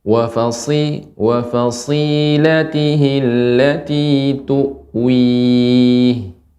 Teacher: tebal, shad tebal dan mengalir